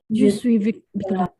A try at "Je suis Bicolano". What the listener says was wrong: Oui, je suis Bicolano.